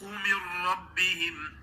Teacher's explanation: را کو خوب موٹا پڑھیں گے، را پر زبر و پیش ہو تو اس کو ہی موٹا ہی پڑھا جاتا ہے